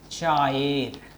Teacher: এখানে দেখো চা এবং এর, এই এ এবং চা এর মাঝখানে একটা অন্তস্থ অ চলে এসেছে। এই অন্তস্থ অ কিন্তু একটা ব্যঞ্জন ধ্বনি, যদিও এই যে ব এবং অ, এটি অন্য নামেও আমরা চিনি। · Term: অশ্রুতি